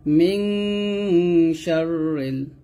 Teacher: মিম নুন জের মিং গুণ হবে